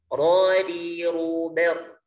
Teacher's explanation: sifat takrir, artinya bergetar. Hurufnya cuma 1, huruf yang bergetar itu yaitu huruf ro. · Adapun getarannya di sini harus lembut, tidak boleh berlebihan.